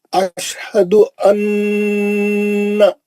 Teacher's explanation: اچھا غنہ کریں گے اس میں نون مشدد ہے